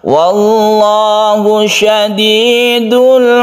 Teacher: sebelumnya ada fathah disebut dengan lam jalalah dibaca tafkhim atau mutaqom tebal ya syadidul iqob Al bertemu dengan Ain izhar